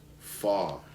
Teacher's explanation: So cutting out this R before a consonant. And Brits don't say the R at the end of words like car.